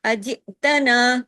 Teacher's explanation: حمزہ ہے، جھٹکے کے ساتھ پڑھا جائے گا